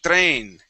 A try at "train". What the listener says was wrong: Okay, and you're using a hard R sound. So yes, you want to use terrain. Your tongue is not going to touch the teeth. Tongue back, and you say terrain.